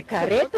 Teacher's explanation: no interior do Rio Grande do Sul o r fica mais fraco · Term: R fraco